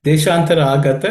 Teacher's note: Deshantara Agata is all unaspirated consonants.